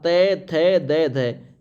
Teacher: त थ द ध यानी ये आपका दंत्य वर्ग में आता है